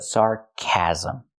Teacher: we need a short a sound like black cat for the second syllable